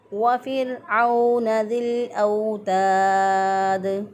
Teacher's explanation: वाव पे होंठों को गोल करके वाव को अदा करेंगे